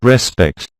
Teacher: the word respect has a stress on the second syllable both when it's a verb and a noun